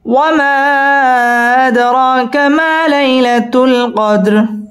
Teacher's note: আদ র পুর হবে এবং র 1 আলিফ টেনে পড়তে হবে মধ্যে তাবাই। ওয়ামা আদরাকা মা মধ্যে তাবাই 1 আলিফ টেনে পড়তে হবে।